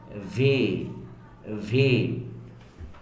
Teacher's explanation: উপরের দাঁত নিচের ঠোঁটটা আছে এ বাইট